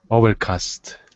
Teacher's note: maybe just the intonation of overcast so emphasize the beginning of the word